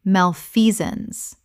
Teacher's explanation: Three syllables with the stress on the second. The sance collapses to zuns.